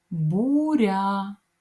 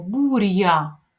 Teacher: але я робить м'ягким приголосний р